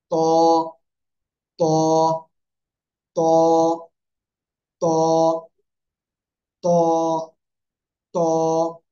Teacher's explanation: জিহ্বার আগা এই উপরের দুই দাঁতের গোড়ায় লাগিয়ে মোটা আওয়াজে আমরা উচ্চারণ করব।